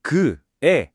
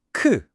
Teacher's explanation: 크 할 때 훨씬 더 강한 바람이 터져 나오죠. 이 추가된 획은 말하자면 공기를 더 세게 뱉어라는 시각적인 명령어인 셈입니다.